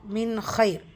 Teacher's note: நூன் சுக்கூனுக்கு அப்புறமா ஹா இதுஹார் உள்ளதை உள்ள மாதிரி ஓதணும். ஆனால் குன்னா செய்யக்கூடாது இந்த இடத்துல.